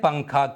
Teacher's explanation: اخفا کا قاعدہ کب بنتا ہے یہ ہم نے اچھے سے سیکھ اور سمجھ لیا ہے، لیکن جہاں کہیں بھی اخفا کا قاعدہ بنا ہوا ہوگا وہاں پر ہمیں کیسے پڑھنا چاہیے؟ نون کی آواز کو ناک میں چھپا کر ایک الف کے برابر غنہ کر کے پڑھنا چاہیے، زبان کی نوک مسوڑوں سے ہٹا کر، جیسے پنکھا کے نون کو پڑھتے ہیں، اس کو اخفا کہتے ہیں۔